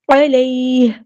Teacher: اگر ہم یہاں پہ وقف کریں گے تو ہا کو ساکن کر دیں گے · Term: ہا ساکن